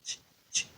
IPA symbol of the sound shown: t͡ʃ